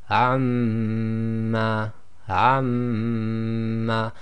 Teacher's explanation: your lips are still coming together as the normal of M but you're vibrating the sound in your nasal cavity · the Ghunna of the Meem is still effectively using the lips as is its proper makhraj. However, your vibrating the sound through the nasal cavity. Okay, so again that will be for Meem mushaddad. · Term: nasalization